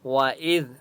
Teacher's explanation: جعلنا البيت مثابة للناس وأمنا، وَإِذ ذال کے اوپر سکون ہے، حمزہ کو ذال کے ساتھ ملائیں گے اور ذال کو نرمی کے ساتھ پڑھیں گے